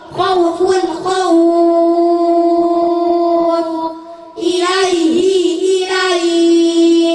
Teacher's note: Mad lin fathah diikuti waw atau ya sukun bertemu huruf hidup dibaca waqaf, panjangnya 3 alif atau 6 harokat